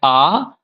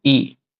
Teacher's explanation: तो ए जिन दो स्वरों के मेल से बना हुआ है वो है आ धन ई, आ धन ई। आ का उच्चारण स्थान हमने शुरू में देखा कंठ, ई का उच्चारण स्थान ताल।